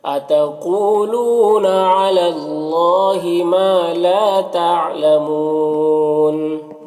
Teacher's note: یہاں پر اللہ کے لام سے پہلے لام کے اوپر زبر ہے تو اللہ کے لام کو پر پڑھیں گے، کھڑا زبر ہے، ایک الف کے برابر کھینچیں گے۔ ما میں الف مدہ ہے، لا میں بھی الف مدہ ہے، دونوں کو ایک الف کے برابر کھینچیں گے۔ یہاں پر واو مدہ ہے، اور یہاں پر اگر وقف کریں گے تو نون کا زبر سکون سے بدل جائے گا، تو پھر یہاں پر مد عارض وقفی ہوگا۔